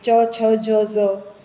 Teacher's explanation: જીભનો અગ્રભાગ કઠોર તાલુને સ્પર્શે તો કયા ધ્વનિઓ ઉદ્ભવે? તો આ બધું પણ આપણે જરાક ધ્યાનમાં લેવાનું. તો એને તાલવ્ય ધ્વનિઓ કહેવાય.